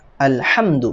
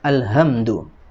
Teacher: Ya, huruf hak di sini dia makhrajnya adalah di wasatul halqi, ya, atau di pertengahan tenggorokan